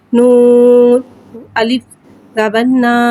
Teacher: الف سے پہلے زبر آ رہا ہے، الف مدہ ہو رہا ہے، لہذا حرف مدہ کو ایک الف یعنی 2 حرکات کے برابر کھینچ کے پڑھیں گے۔ زبر کو منہ کھول کے ادا کریں گے۔